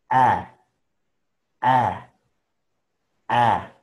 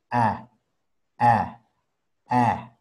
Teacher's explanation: Entonces, su sonido es un poco confuso porque mucha gente hace A y no es A completamente. Otras personas hacen E y tampoco es E completamente. Es en medio.